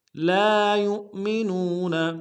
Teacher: فلا وربک لا یؤمنون، لا یؤمنون، لام الف مدہ ہے، ایک الف دال میں کھینچیں گے. یا کو حمزہ کے ساتھ ملائیں گے، حمزہ بشکل واو ہے، جھٹکا دیں گے